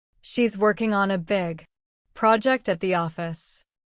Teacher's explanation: Stress working, big project and office. This will help you speak with a natural English cadence, instead of sounding too flat or robotic.